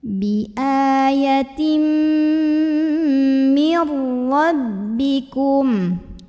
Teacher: tanwin kasrahnya lebur atau masuk ke mim, ya. Jadi bukan bi ayatin tapi bi ayatim sambil tahan dengung. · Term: idgham bil gunnah